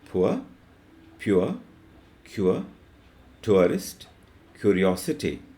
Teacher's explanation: The next diphthong we will discuss is u. The movement is from u to a.